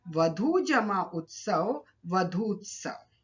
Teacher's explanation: वधू शब्द का अंतिम वर्ण है ऊ और उत्सव शब्द का प्रथम वर्ण है उ, तो दीर्घ और ह्रस्व उ मिलकर दीर्घ उ में परिवर्तित हो गए। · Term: दीर्घ संधि